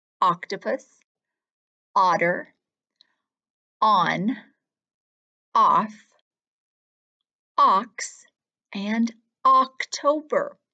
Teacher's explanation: each time my mouth made that same round shape and my jaw dropped down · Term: ah sound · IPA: /o/